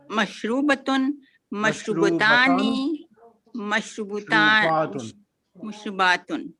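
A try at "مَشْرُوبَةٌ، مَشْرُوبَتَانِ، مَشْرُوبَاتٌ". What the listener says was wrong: Excellent. Excellent.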